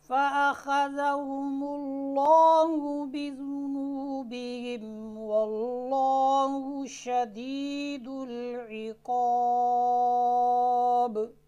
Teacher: قاعدہ یہ ہے کہ لفظ اللہ سے پہلے زبر ہو، جیسے یہاں پر مثال میں واللہ موجود ہے، یا کیا ہے پیش ہو، جیسے فَأَخَذَهُمُ اللَّهُ، تو لفظ الجلالہ کا جو لام ہے یہ موٹا پڑھا جائے گا۔